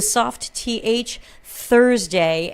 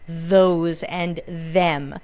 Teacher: you hear the soft th Thursday and you hear the harder one for words like those and them